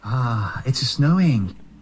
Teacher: there's usually a vowel before the s